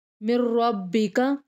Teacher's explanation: میم کو نیکسٹ را کے ساتھ ملا کے پڑھیں گے، نون سائلنٹ ہو جائے گا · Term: ادغام